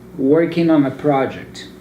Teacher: this type of word the ing ending what you do is you join the n sound of the ing word with the vowel sound that comes after it · I don't pronounce the G so you can cut it out so since my last sound is the N and the lat